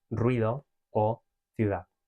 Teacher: And rising, as we know, this means that the second one is pronounced strongly and the first one is pronounced as the semiconsonant. So in Spanish, there are only two possible cases, such as in ruido or ciudad. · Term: rising diphthong